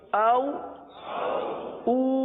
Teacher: آپ نے دیکھا او کو نرمی سے پڑھا، او کو ایک الف تک کھینچ کر پڑھا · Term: واو لین